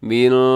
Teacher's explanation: یہاں پہ اخفا ہو رہا ہے کیونکہ نون ساکن کے بعد جب شین آ جاتا ہے تو وہاں پر اخفا ہوتا ہے، آواز کو ناک میں چھپاتے ہیں